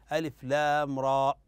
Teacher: فهنا خطا ان يمد القارئ في را اكثر من حركتين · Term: المد الطبيعي